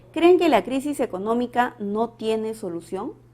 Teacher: En la oración presenta tono final ascendente, porque es una pregunta interrogativa directa